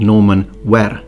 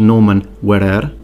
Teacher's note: yes i'm purposely trilling my r when pronouncing old norman